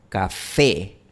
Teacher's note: Café no hay ningún diptongo al final, pero si yo lo pronuncio al estilo inglés sería café café.